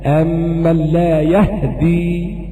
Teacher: بإسكان الهاء وتخفيف الدال